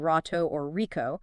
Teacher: an R at the beginning of a word, like in rato or rico, is produced in the throat with friction, sounding very much like an English H.